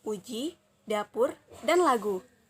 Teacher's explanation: u tinggi atas belakang bundar dan u tinggi bawah belakang bundar